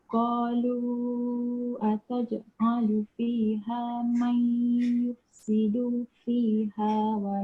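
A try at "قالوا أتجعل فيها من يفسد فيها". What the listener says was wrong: Yufsidu tu pendek. Satu jim tu kan. Jim tu dah betul dah bunyi dia qalqalah, cuma jangan berat kan. Berat tu maksudnya dia jangan terhenti.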